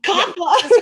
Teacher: then there's the glottal stop at the end